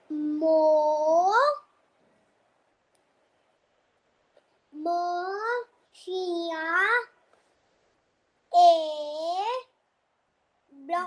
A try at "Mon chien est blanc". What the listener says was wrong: Blanc. We don't pronounce the C. We say only blanc.